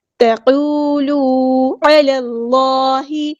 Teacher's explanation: عین کو مستحل کریں گے، تھروٹ سے ادا کریں گے. لام کو لام کے ساتھ ملا دیں گے، حمزۃ الوصل ہمارا ڈراپ ہو جائے گا.